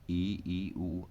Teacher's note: तो जीवा तालु से नीचे सटी रहती है, इसे संवृत स्वर कहते हैं